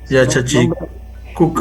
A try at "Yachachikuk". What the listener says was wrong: Yachachikuk. Ya, Yachachikuk. Acá el acá es pronunciado. Ya no es muda, es Yachachikuk. Ya, Yachachikuk.